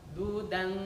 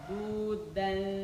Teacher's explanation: Tanwin ketemu dal, berarti nempel di mana? Nempel di dal, langsung nempel.